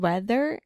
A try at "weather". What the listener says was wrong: Your TH is so good, meu amor, but for some reason in the word weather...